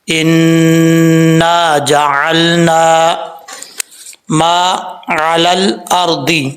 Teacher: نون کے اوپر شد ہے، غنہ کریں گے ایک الف کی مقدار، آگے الف ہے اس کو ایک الف کی مقدار جو ہے وہ لمبا کیا جائے گا۔